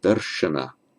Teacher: the r does not make the following n retroflex, because sh is one of the consonants that requires a repositioning of the tongue to pronounce it darsh, because the tongue's got to go up to be under the hard palate.